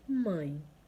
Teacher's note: o som da vogal A ou O é nasal, ou seja, será emitido parte pelo nariz, parte pela boca. Exemplo, mãe, né?